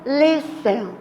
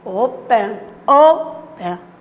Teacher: Olha, a sílaba tônica está no início.